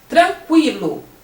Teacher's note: Mas quando você fala tranquilo, o QU tem o som de quilo, o U aparece